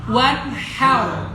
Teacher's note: Nah, wan har pakai ha, tengah tenggorokan.